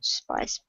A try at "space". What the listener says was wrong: that's pronounced space, not spice.